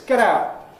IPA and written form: ˈget̬ ˈaʊʔ (get out)